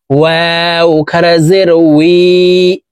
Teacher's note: ওয়াও হরফ দুই ঠোঁট গোল করে দুই ঠোঁটের মাঝে ফাঁকা রেখে উচ্চারণ করে পড়তে হবে।